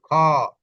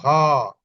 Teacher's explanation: বাতাসটা একটু বেশি বের হয় অর্থাৎ বাতাসে চাপের আধিক্য থাকে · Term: মহাপ্রাণ